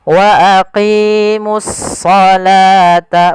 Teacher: alif lam syamsiyah yaitu suaranya kita langsung ke huruf shadnya